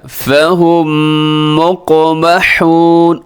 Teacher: یہاں بھی غنہ ہے, میم مشدد بھی ہے, اور میم ساکن کے بعد پھر میم آ رہا ہے, تو یہاں پہ ادغام ہوتا ہے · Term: ادغام شفوی